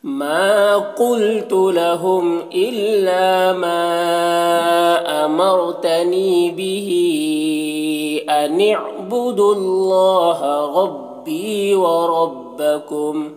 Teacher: ربی میں رو کو پر پڑھنا ہے، بی میں یا مدہ ہے، اسے ایک الف کے برابر کھینچیں گے۔ وربکم میں رو کو پر پڑھیں گے اس طرح سے۔